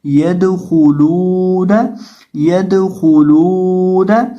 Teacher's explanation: تو یہاں واو ہے لام کے بعد تو لام کو ایک الف کے برابر لمبا کر کے پڑھیں گے · خا کو موٹا کریں گے کیونکہ خا حروف مستعلیہ میں سے ہے اور اس کے اوپر پیش ہے اس لیے اس کو پڑھتے وقت ہم اپنے ہونٹوں کو گول کر کے پڑھیں گے. اور لام کو ایک الف کے برابر لمبا کریں گے کیونکہ اس کے بعد واو مدہ ہے.